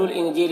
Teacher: انجیل کی نون میں اخفا ہوگا، نون کی آواز کو ناک میں چھپا کر پڑھیں گے۔